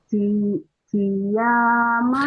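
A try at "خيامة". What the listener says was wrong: Khi. Bukan si. Khi. Khia. Khia, khiyama.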